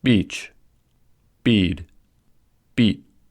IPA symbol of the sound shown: i